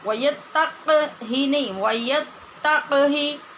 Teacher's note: تق نہیں کہنا، تا جو مشدد ہے زور اس پہ دینا ہے، قاف صرف ساکن ہے، اس پہ زور دے کے مشدد کر کے ہم نے قلقلہ نہیں کرنا.